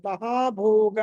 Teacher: భ అన్నది మహా ప్రాణం ఒత్తి పలకాలి